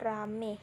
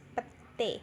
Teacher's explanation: Kata ramai diucapkan rame, petai diucapkan pete. Perubahan ini terjadi pada bunyi vokal rangkap ai ke vokal tunggal e. Penulisannya pun disesuaikan menjadi rame dan pete. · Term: monoftongisasi